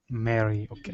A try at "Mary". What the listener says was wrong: Mary. So your tongue is farther back in your mouth. Mary.